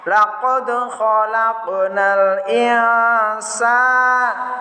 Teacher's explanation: itu baca huruf sin gandeng dengan alif, berarti bacanya panjang. Sin sendiri, alif sendiri, maka dinamakan bacaan mat tabi'i, panjangnya 1 alif.